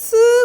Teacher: 스 같은 경우는 막지 않아 완전히 다 막아서 공기를 차단시키지 않아 그런데도 불구하고 왜 자음이라 그러냐면 방해를 하거든 통로를 좁게 만들어서요 아